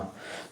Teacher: देखिए दोस्तों, ये जो 148 क्वेश्चन है, इसमें नासिका का यूज होगा। नासिका के साथ मुँह से हम इसका उच्चारण करेंगे, ना। तो देखिए दोस्तों, ये 5वां अक्षर आता है, तो इस तरीके से इसका उच्चारण क्या होगा, ऑप्शन नंबर ए।